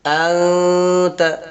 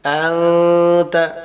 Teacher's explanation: نون کی آواز کو ناک میں چھپا کر پڑھیں گے، جیسے ابھی ہم پڑھ رہے ہیں انت، تو اسی نون کو چھپانا ہے۔ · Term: اخفا